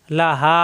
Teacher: অব্দি হা এক আলিফ টান খাড়া জবর হা লাহা আলিফ জবর হা মুখ খোলা থাকবে এক আলিফ টান